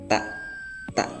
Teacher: Ta itu dari 2 gigi sama gusi